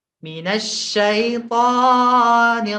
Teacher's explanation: to-nya kan panjang, ya. Panjangnya 2 harokat saja. Jadi, kita tidak boleh memanjangkannya lebih dari 2. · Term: mad tabi'i